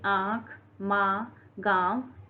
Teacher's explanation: अनुनासिक स्वरों के उच्चारण में मुंह से अधिक और नाक से बहुत कम सांस निकलती है